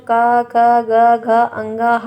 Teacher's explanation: ये सभी के सभी जितने भी यहाँ पर दिए गए सबका उच्चारण स्थान जो होता है वो कंठ से होता है